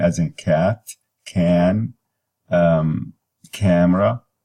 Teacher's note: This sound is also lax. It is low and front, and lax and unrounded.